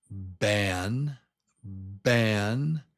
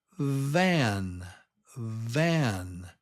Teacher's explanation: Ban starts with B, and the lips pop. B, B, ban. Van starts with V, V.